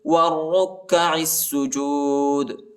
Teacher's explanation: اور آخر میں جو ہے دال کو جھٹکے کے ساتھ پڑھیں گے، قلقلہ کریں گے، حروف قلقلہ کا حرف ہے.